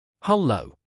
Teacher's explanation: It has that strong H at the start to kick it off, a clear L in the middle, and an open vowel that carried well through scratchy, crackling telephone lines.